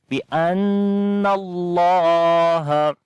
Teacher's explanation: Before the name of Allah there is fatha on the noon, we read this in heavy sound